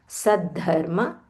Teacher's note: There is a mahaprana dha